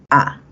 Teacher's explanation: Entonces tenemos A, es baja, ¿cierto? La boca se va a abrir porque es abierta, ¿sí? Y la lengua va hacia abajo